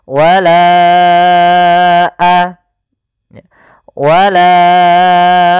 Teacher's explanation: atau l harakat Bagaimana cara membacanya wala a baru baca a panjangkan lanya dulu empat harakat baru lepas · Panjangkan la-nya dulu 4 harokat baru lepas. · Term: Mad Jaiz munfasil, mad jaiz munfasil